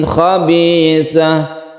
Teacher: tanwin bertemu dengan kha yang kita sebut dengan izhar, tidak berdengung